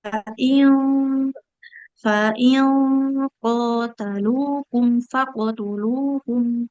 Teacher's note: ikhfa-nya kan nun sukun. Bertemu huruf qaf. Huruf qaf tebal, maka bunyi ikhfa-nya dengunnya ikut tebal.